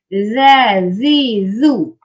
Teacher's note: huruf zal ni lidah keluar sedikit daripada gigi. Dia lembut.